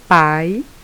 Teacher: observem que o som do A é bem forte e o som do I é mais baixo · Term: semivogal